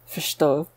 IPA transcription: fʃ.to